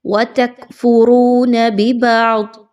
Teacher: ضاد کے مخرج پر خاص توجہ دیجئے، موٹا کر کے پڑھیے